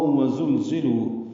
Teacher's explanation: زا کو تیز صفیر کی آواز سے ادا کریں